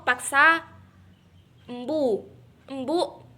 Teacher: huruf K merupakan kontoid plosif dorsovelar, tak bersuara dan tidak beraspirasi